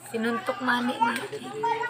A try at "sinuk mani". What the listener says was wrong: Yan po ay sinuk mani. Sinuntok ha, sinuk mani.